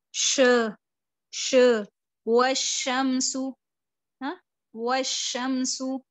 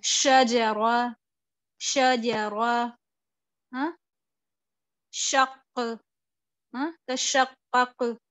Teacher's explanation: آواز اور ہوا جو ہے وہ منہ میں آپ کے پھیل جاتی ہے. اس کو بولتے ہیں تفشی.